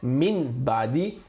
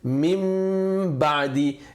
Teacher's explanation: The letters for replacement is only ba, and the Arabic term for replacement is iqlab. You replace the Noon Sakin sound or the Tanween sound with a Mim sound.